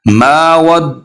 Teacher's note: इसको माँ नहीं करना, नाक में आवाज नहीं लेके जानी